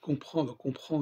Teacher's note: il y a la diphtongue nasale en